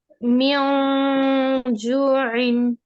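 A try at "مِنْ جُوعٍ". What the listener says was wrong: रॉन्ग है my dear. म्यो तालू से काफी जुबान अलग है। जीम के मखरज में जुबान हमारी तालू को लगेगी, वो भी स्ट्रांगली लगेगी।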